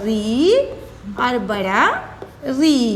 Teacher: री और ऋ इसका उच्चारण स्थान भी मूर्धा है